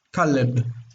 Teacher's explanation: They added this vowel to break the syllable, so it wouldn't be monosyllabic. It would be easier to pronounce.